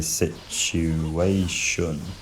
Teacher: defaulting to the put vowel in the unstressed syllable, shun. But, really, if I'm being honest, it doesn't feel like any of the stressable vowels, it just feels unique, uh.